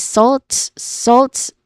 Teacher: It starts with a buzzing sound with a letter Z sound with a voiced sound and then it ended it has a soft and quick vowel sound after the buzzing sound and it ends with a consonant cluster of three consonants.